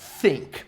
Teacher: Não é F e nem S. É th. É o som de S com a língua presa.